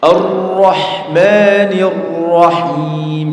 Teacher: membaca ro tapi getarannya lebih dari dua getaran